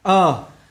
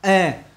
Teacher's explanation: ơ kéo dài, e hẹp và không kéo dài